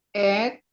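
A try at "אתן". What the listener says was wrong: Ini bukan ed. Hati-hati, bukan ed. Ini at. At.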